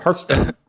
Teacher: you're making the T sound with the S sound instead of making them distinct yeah it's like a smooth little ramp up into the end